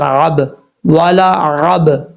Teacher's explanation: عین کو حمزہ کی آواز نہیں نکالنی، عین کی آواز سے ہی پڑھا جائے گا۔ عین اور ہا یہ دونوں ایک ہی جگہ سے ادا ہوتے ہیں، یعنی ایک سائڈ سے عین، دوسری سائڈ سے ہا پڑھا جاتا ہے گلے کے درمیان سے، اس چیز کا آپ نے خاص خیال رکھنا ہے۔